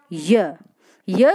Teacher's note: व्यंजनों के उच्चारण में ये ऊपरी पटल से टच होती है, जबकि जो अर्ध स्वर वाले स्थिति रहती है उसमें जीवा जो है वो मुख के बीच वाले भाग में बनी रहती है और प्राणवायु के निकलने में कोई व्यवधान उत्पन्न नहीं करती है। तो ऐसे वर्णों को हम क्या बोलते हैं, अर्ध स्वर कहते हैं।